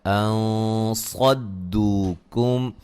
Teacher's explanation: ان صدوکم نون ساکن کا یہاں موٹا اخفا ہے